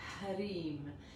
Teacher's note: il y a un H, donc beaucoup de prana, beaucoup de vent dans le H